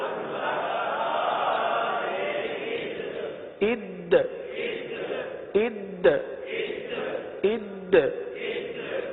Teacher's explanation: حمزہ دال زبر اد، اب دیکھیں دال ہے، دال حروف قلقلہ میں سے ہے، دال کو جماؤں کے ساتھ ادا کرتے ہوئے یہاں پر قلقلہ بھی ادا کرنا ہے